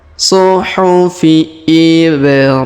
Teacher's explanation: Huruf, perhatikan huruf ba berharokat sukun, maka kita pantulkan.